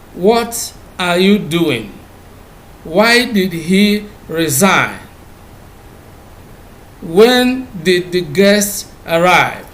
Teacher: wh questions usually are expressed with the falling tune